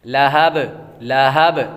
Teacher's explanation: نارا ذات، نارا ذات، ذال کو نرمی کے ساتھ پڑھتی ہیں، اور آگے الف حروف مدہ۔ لہب، لہب، لام باریک، اور ہا موٹا پڑھیں گے اس کو